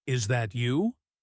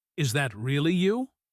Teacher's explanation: Feel the surprise. Let your voice climb up on really, like you're genuinely shocked and delighted at the same time. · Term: emphasis